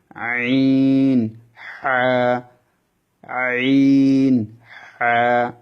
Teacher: কণ্ঠর মাঝখান থেকে কণ্ঠ দাবিয়ে চিকন সুরে উচ্চারণ হবে এই অক্ষরগুলা।